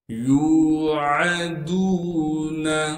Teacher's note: کی وجہ سے یا کو ایک الف کی مقدار کھینچیں گے، عین کو صاف کر کے گلے سے ادا کریں گے ، دال کو واو مدہ سے ملائیں گے کیونکہ واو ساکن